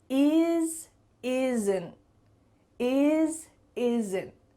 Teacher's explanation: in fast conversations, we're often going to cut off that T and make it a stop T